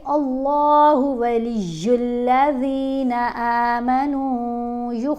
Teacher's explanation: اب اللہ کی لام کو موٹا پڑھیں گے، کیونکہ اس لام سے پہلے حرف کے اوپر اگر زبر ہو یا پیش ہو تو لام کو موٹا پڑھیں گے، اگر اس لام سے پہلے حرف کے نیچے زیر آ جائے تو پھر باریک پڑھیں گے۔